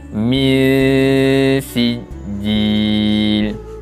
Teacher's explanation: Yang mana ihfa ni kita kena baca dengan bacaan sembunyi. Kita sembunyikan bunyi bacaan nun mati dan kita bacakan dengan bacaan dengung. Dengung dengan kadar 2 harakat. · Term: ihfa hakiki